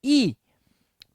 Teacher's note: ઈ જે છે એ ઉચ્ચ સ્થાનેથી આગળના ભાગથી બહાર આવે છે